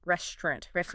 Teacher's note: often in casual speech, people kind of drop or soften that middle a sound. So instead of restaurant, it often sounds more like restaurant.